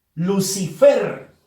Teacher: Fuerza de voz en la sílaba fer. Por lo tanto, es la última sílaba de esa palabra. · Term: palabra aguda